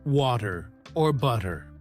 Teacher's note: the flap T sound, where the T sounds like a soft D